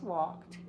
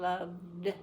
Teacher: Walk ends with a k, which is not vibrating, so to say ed, I just say t.